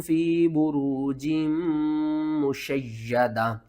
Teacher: یا کے اوپر آپ نے سختی کرنی ہے، میم کے اوپر آپ نے غنہ کرنا ہے